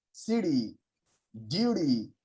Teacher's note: converting into d sound but not the hard d but the soft d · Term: flap t